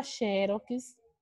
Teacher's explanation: Porque quando a gente escreve aqui, ó, a palavra xerox, a gente vai conseguir perceber que a finalização dessa palavra é com X. Ela é uma palavra paroxítona, onde esse xé aqui para mim é a sílaba tônica da palavra.